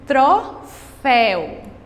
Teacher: para frente olha o exemplo troféu a última sílaba o céu a última sílaba é a sílaba mais forte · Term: oxítona